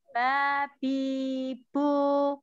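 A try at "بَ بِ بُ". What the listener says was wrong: Jadi huruf ba itu makhorijul huruf ba itu kan bertemunya dua bibir dalam ba. Ya, jadi jangan dilipat ba. biasa aja. Ba. Ba bibu.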